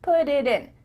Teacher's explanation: faster because instead of spending the time to let the air come out of your mouth your tongue is just tapping the top of your mouth